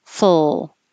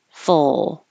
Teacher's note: my tongue is already going to the L position full so when I'm finished with my f I'm immediately making the sound of the L